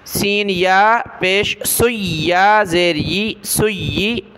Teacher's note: یا کے اوپر یہ تشدید ہے، اس وجہ سے ہم نے یا کو جما کر سختی کے ساتھ پڑھنا ہے۔